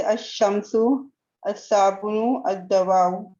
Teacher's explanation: ان حروف کے اوپر ادغام ہو جاتا ہے، مطلب یہاں پر شدہ آ جاتا ہے · الف لام کا لام پڑھا نہ جائے بلکہ بعد والے حروف میں ادغام کر دیا جائے، ان حروف کو حروف شمسی کہتے ہیں، جیسے الشمس، الصابن، الدواء۔